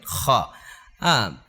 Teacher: গুন্না করে পড়াটা ওয়াজিব তাহলে খা নুনের সাথে মিলায় পড়তে হবে খার উচ্চারণটা হয় হলকের শেষ থেকে